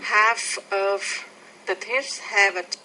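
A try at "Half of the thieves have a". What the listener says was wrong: I think you're not getting the tongue exactly between your teeth with the word thieves. Thieves. Listen to that again.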